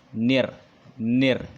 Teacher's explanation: Nah, membaca alif lam samsiah itu harus dibaca idgham ya. Jadi nir memasukkan bunyi huruf nun kepada bunyi huruf ro